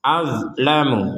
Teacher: Nah, perhatikan di sini ada dzot, huruf dzot jangan sampai dipantulkan. Azlamu, jadi nah, itu kan tidak ada pantulan dan itu yang benar.